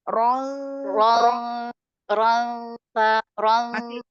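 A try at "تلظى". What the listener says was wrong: Masih masih masih kalau tanya ini masih tebal. Justru tanya lebih tipis sebenarnya. mungkin terbawa huruf ro-nya kali ya. Ro-nya kan tebal.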